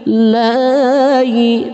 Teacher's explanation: Ukuran kadar matnya 1 alif atau 2 harakat.